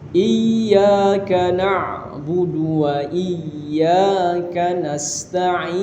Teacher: Kemudian di iya itu ditekan karena tasydid Pak ya. Ada tasydid di situ, ada syabdu kalau bahasa kita.